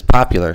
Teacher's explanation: Take, for example, number 5. In English, it's popular, so the stress is on the first syllable, whereas in Spanish, it's the last syllable, popular.